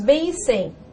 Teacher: Na grafia, tais vocábulos não parecem ser ditongos, pois temos E e M que não formam encontros vocálicos, mas na pronúncia, ó, tratam-se de ditongos decrescentes nasais · Uma vez que o M, além de nasalizar a vogal, possui valor de semivogal I